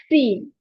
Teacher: सीन sound comes when the tip of the tongue touches the edge of the lower two front teeth. ठीक है. तो सीन को जब पढ़ेंगे तो टिप ऑफ द टंग उसको टच करना है, टंग की टिप को टच करना है edges of the lower टू front teeth.